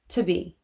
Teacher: The preposition to, T-O, actually becomes more of a T sound, so just the consonant